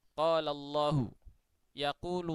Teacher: tebal termasuk lam ketika dibaca tebal maka yang terjadi itu adalah pangkal lidah itu mengarah ke atas alias kembung ya dikembungkan begitu